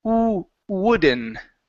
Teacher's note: The beginning is good. So instead of pronouncing a t at the end, only pronounce an n.